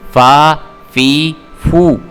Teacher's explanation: جب ہمارے اوپر والے جو دانت ہیں وہ ہماری نیچے والے ہونٹ کے خشک اور تر حصے کے درمیان میں جب لگیں گے تو پھر فا ادا ہوگا